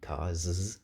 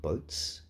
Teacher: Cars, there it's z, but boats, there it's s, not z